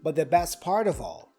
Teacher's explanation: The T for but is dropped, and then we pronounce only the T for the. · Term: connected speech